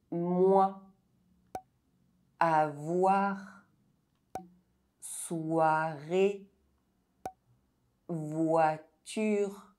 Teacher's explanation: OI is pronounced [wa]